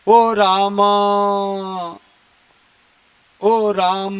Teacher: म के बाद जो अ है उसको हमने प्लुत कर दिया